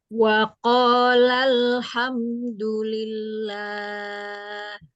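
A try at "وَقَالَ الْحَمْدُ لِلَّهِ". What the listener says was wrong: Nah, untuk huruf H, hanya dipersempit lagi ya. Jangan dibuka terlalu lebar, karena dia ada sifatnya itu yang mengalir itu nafasnya mengalir. Jadi waqalal ha ada ha Wa qala alhamdulillah.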